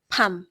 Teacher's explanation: the M consonant as a final consonant, the sound is not drawn out, it is just dropped. So it is just pam, not pam, pam.